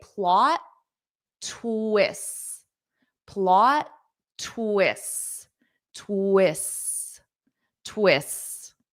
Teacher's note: So, notice I don't say plot twists. I don't pronounce that T twice because it forces a pause.